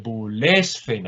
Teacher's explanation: Aquí he cambiado el acento porque termina en sílaba larga, luego no lo puedo dejar en la antepenúltima sílaba